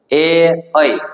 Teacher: એ ઐ ઓ ઔ પણ આને આપણે ઉચ્ચારવીએ તો કંઠ્ય તાલવ્ય એ ઐ કંઠ અને તાળવા દ્વારા ઉચ્ચારાતા આ જે છે એ સ્વર છે